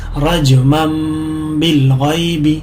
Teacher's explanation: نون ساکن کی آواز میم میں تبدیل ہو جائے گی. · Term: اقلاب